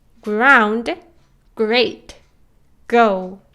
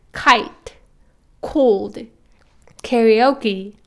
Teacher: There is very little air coming from your mouth when you pronounce g. It's because it's an unaspirated sound. · On the other hand, when pronouncing k sound, like kite, cold, karaoke, if you put your hands a few inches away from your mouth, you'll feel that there is much more air coming from your mouth, and that's because, unlike G, K is an aspirated sound.